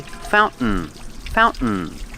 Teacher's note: With this pronunciation, you put the tongue up like you're doing a stop T, but you don't make the T, you fall to the end sound.